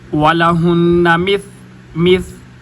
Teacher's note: اوپر والے دانتوں کے ساتھ جب زبان کا کنارہ لگائیں گے تو ثا ادا ہوگی